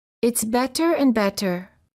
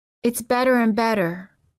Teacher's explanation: a tapped T because you quickly tap the tip of the tongue on the gum ridge